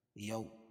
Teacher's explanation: واولین نرم آواز کے ساتھ جلدی پڑھیں گے